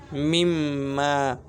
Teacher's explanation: 17 নম্বর মাকরাজ নাকের বাসি হইতে গুন্না উচ্চারিত হয় মিম্মা।